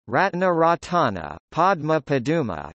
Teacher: Sequences of stop + nasal are sometimes separated by a or u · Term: epenthetic vowel